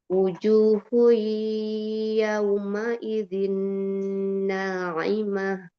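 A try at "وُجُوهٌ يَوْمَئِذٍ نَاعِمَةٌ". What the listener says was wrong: nah loh, kok ke situ? Itu lama kemana tuh Naimah tuh? Kayaknya tuh tengah-tengah tuh udah tuh. Naimah tuh nikmat itu tuh udah tengah-tengah.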